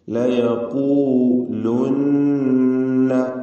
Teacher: ലയഖൂലുന്ന, നൂൻ മുശദ്ദദ മണിച്ചുകൊണ്ട് ഉച്ചരിക്കുക.